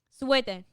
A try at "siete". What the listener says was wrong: No, you're saying sweater.